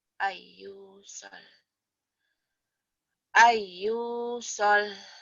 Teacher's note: nun mati atau tanwin ketemu ya idgham biguna